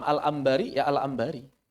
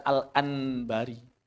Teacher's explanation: para ulama sepakat mengubah nun sakin atau nun jadi mim karena mim memiliki kesamaan dengan nun dan ba